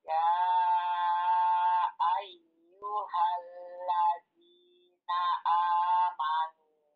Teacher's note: Ya-nya ada tasdid, Ibu. Dihentak sedikit.